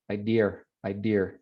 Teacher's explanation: this is a feature of British English. It's the intrusive R that just inserts itself in some cases.